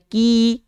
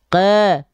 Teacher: Yang harusnya ki, tapi kalau tengah lidah nggak diangkat, ke gitu ya.